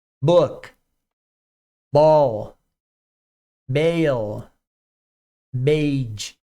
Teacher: o B é mais suave, ele vai vibrar. Labial também